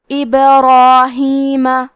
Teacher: اس کے پہلے حرف را کا حکم ہے تفخیم تو ہمیں مد الف کو بھی بھاری آواز میں ادا کرنا ہے